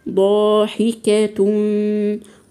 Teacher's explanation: الالف مفخمه لان الالف تتبع ما قبلها